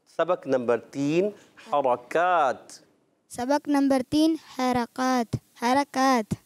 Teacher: रा को मोटा करना है